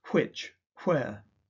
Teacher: In conservative RP, some speakers have a voiceless W